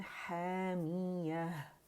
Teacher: हामिया भी अलिफ मद्दा है, हा की आवाज़ को खींच रहा है, अलिफ ममदूदा 2 काउंट के लिए आवाज़ ऊपर जाएगी, मद तबीई है, मद असली है, ठीक है.